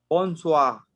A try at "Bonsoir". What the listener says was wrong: Ajá, ocupamos escuchar esa R al final. Bonsoir.